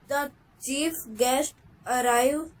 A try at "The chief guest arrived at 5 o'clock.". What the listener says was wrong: Arrived, बेटा डी भी तो लगा हुआ है।